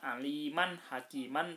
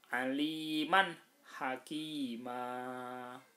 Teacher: Ini disebut sebagai mad iwad. Cara membacanya seperti tidak ada tanwin. Nah, jadi dibaca fathah biasa.